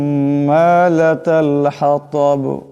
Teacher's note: লাতাল হাতাব এ হা বড় হা, এ তোয়া এখানে তোয়া আওয়াজটাকে মোটা করিয়া পড়তে হবে। আর দম সারলে বা সাকিন হয়ে যাবে, আওয়াজটিতে একটি কলকলার মতন জটকা খাবে।